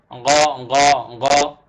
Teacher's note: দেখেন একদম ছবি দেওয়া আছে এখানে, গ এইখানে লাগবে, আপনার গলার ছোট জিহ্বাটা এই জায়গায় লাগবে গ বলতে গেলে। গ নরমাল গ না বাংলার, একটু গলার ভেতর থেকে হবে, কণ্ঠনালীর শেষ অংশ থেকে হবে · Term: গাইন